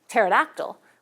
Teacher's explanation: we just delete the P altogether, since English doesn't allow two stops in a syllable onset.